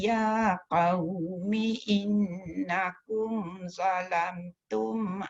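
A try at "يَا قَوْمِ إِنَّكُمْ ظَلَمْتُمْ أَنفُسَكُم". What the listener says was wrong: Tak sampai ambil balik. Ya qaumi innakum zalamtum dengung tu mesti cukup. Zalamtum jangan za. Zalamtum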